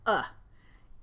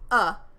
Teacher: uh is a quick unstressed relaxed neutral sound very close to the short u in sun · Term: schwa